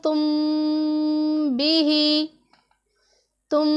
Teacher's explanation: मीम साकिन में हमने गुन्ना करना है और गुन्ना की मिक़दार 1-2-3 हरकत के बराबर होगी, या 1-2 सेकंड का आप अंदाज़ा लगा लें। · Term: इख़फ़ा शफ़वी